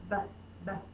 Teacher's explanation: my lips are closed and then I pop the air but so with my lips or close that kind of reminds